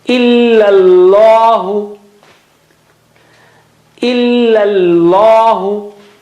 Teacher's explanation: So illa, first one is flat and thin, and the other one is thick.